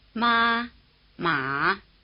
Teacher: distinctive difference between the two tones you just heard is that one is high and one is low